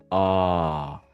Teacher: The tip of your tongue is gonna be close to your bottom teeth, and it's a long sound. · It's not like the ah in Spanish. The ah in Spanish is more tense. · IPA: /ɑː/, ɑː